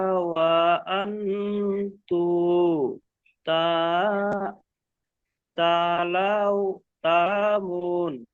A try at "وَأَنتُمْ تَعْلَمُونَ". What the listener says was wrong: ওয়াআতুম, তু নয়, ওয়াআতুম।